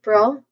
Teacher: That's the first syllable. There's a relaxed a sound here. Shwa sound.